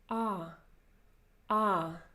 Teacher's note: So in Russian, ah is pronounced with the front part of your vocal tract. It's not oh, it's not ah, it's ah, ah.